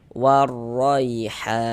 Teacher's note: Maka ini huruf ro dibaca tebal, dibaca tabkhim, sehingga pangkal lidah kita tuh naik terangkat ke atas ketika kita mengucapkannya.